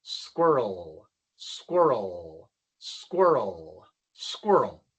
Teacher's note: se apunta la lengua hacia atrás para la R y hacia delante para la L. Squirr, entonces tenemos que hacer ese movimiento rápido.